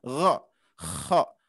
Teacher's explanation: Sedangkan tenggorokan atas ghin atau gho dan juga kho. Nah ini satu mahruz tapi beda sifat.